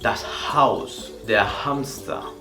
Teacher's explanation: La H siempre también al principio de la palabra se va a pronunciar como un suspiro